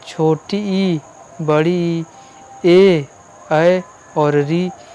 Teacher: जिसका उच्चारण जीभ के अगले भाग से हो उसको अग्र स्वर कहते हैं। इसमें आपके जो है 5 आ जाते हैं।